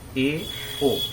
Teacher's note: अर्ध संवृत में ए, ओ, दो वर्ण है, ए, ओ, इसमें मुंह आधा बंद रहता है